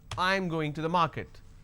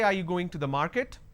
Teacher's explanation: your statement has to be flat, and when it's a question, the last word has to be a rising tone. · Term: flat intonation